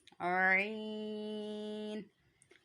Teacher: जहाँ से हमने हा की आवाज़ निकाली है वहीं से आइन की आवाज़ निकलेगी। हलक के दरमियान वाले हिस्से से आइन की आवाज़ निकलती है।